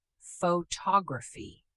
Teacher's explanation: The stress shifts to the second syllable.